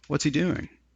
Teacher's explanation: a falling intonation in English right so what's he doing and I kind of have a falling intonation